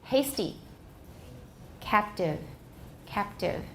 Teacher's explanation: T after another consonant, for example, in hasty and captive is also voiceless.